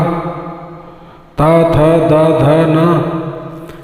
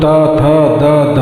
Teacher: इनका उच्चारण करते समय जीव पीछे से आकर दांत को छूती है। जब बोलो ता था दा धा तो जीव आकर के ऊपर वाले दांत को पीछे से छूती है तब उच्चारण होता है। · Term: दंटा